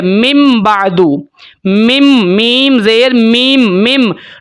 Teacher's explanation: نون ختم ہو جائے گا، نون کو بدل دیا جائے گا میم کے ساتھ، اور اس کے اوپر ہم نے غنہ بھی کرنا ہوتا ہے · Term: اقلاب